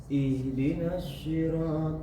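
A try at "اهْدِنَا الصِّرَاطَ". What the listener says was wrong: Jangan dimonyongkan. Ihdinas enggak akan dapat. Ihdinas seperti Bapak membaca seakan-akan membaca huruf sa. Ihdinas seperti itu ya, tapi bukan itu.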